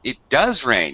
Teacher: He emphasized or stressed, highlighted does, to show the contrast between the fact that most people think it doesn't.